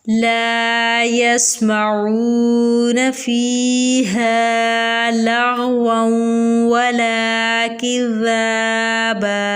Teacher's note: اب دیکھیں یہاں الف سے پہلے زبر ہے، الف مدہ ہوگا، سین ہے اس کے بعد ساکن ہے سین، جب سین ساکن ہو اس کے اوپر صفت صفیر اور صفت حمز دونوں کریں گے، یعنی کہ صفیر کا مطلب ہوتا ہے سٹی کی آواز پیدا کرنا اور صفت حمز میں سانس کو جاری کرنا ہوتا ہے